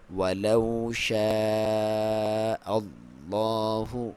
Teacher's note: واو ساکن سے پہلے زبر ہے، واو لین ولو کر کے پڑھیں گے ، اور مد واجب ہے پھر، اور حمزہ کو آپ اللہ